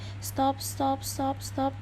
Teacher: Kemudian di depan huruf T ada huruf S. Sedangkan jika huruf S bertemu dengan T, huruf T ini seolah-olah menjadi palatal, sehingga jika contohnya yaitu kata stop, yang jika diucapkan berkali-kali biasa kita mendengar seperti stop, stop, stop, stop, seperti tidak ada huruf T. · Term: progresif